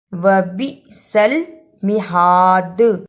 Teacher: وبئس المہاد، اسے وبئس المہاد نہیں پڑھنا، با زیر حمزہ بی، وبئس المہاد۔ دال پر رکنے کی صورت میں قلقلہ بھی کرنا ہے